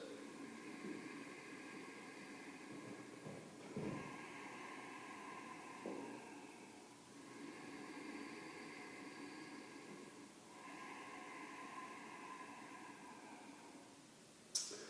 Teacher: it's done with a slight restriction in the back and throat at the glottis epiglottis which is soft cartilage at the back of the throat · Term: ugai breathing